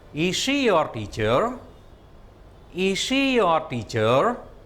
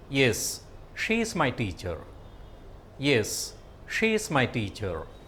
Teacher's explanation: when you are answering, you use a falling tone, and when you are asking a question, you use a rising tone.